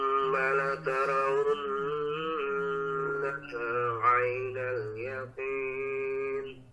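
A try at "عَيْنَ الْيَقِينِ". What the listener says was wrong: Nah, masih bisa lebih disempurnakan lagi Pak, lebih ditekan. Ainal yaqin. Dari ain aja. Ainal.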